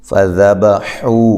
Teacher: حو واو مدہ ہے، ایک الف کی مقدار کے برابر لمبا کرنا ہے